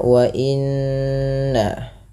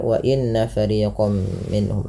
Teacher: tahan bunyi suara nun yang berharakat tasydid karena ia dikategorikan bacaan gunnah. Beberapa di antara kita kadang terlupa di dalam membaca gunnah, tidak menahan bunyinya.